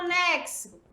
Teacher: o quê quatro letras n e x o mais fonema 5 porque o X tem som de KS